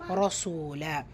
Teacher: ரா ஃபத்தா பெற்று வந்திருக்கு ரசூலால. ஸோ அதை வல்லினப்படுத்தி ஓதணும்.